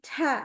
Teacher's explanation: kalau Ca berarti itu biasanya yang kena Itu bukan lagi ujung lidah tetapi sudah ke tengah lidah